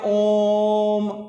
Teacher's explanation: जिसके उच्चारण में हमें 3 गुना समय लगता है। 3 गुना समय का मतलब बात की जाए, जैसे हम बोलते हैं ओम, ओम बोलते हैं ना, ओम, कुछ देरी तक ओम करते रहेंगे, यानी कहने का मतलब जैसे 3 गुना समय लगे। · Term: प्लुत स्वर